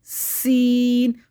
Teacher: سین کو سیٹی سے باریک، سا کو نرمی سے باریک، سا۔